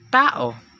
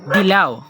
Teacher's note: Pangatlong punto, pangipin o dental. Ang dulo ng dila ay dumidiit sa loob ng mga ngiping itaas.